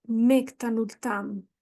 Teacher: E provavelmente fui preguiçosa e não pronunciei o M.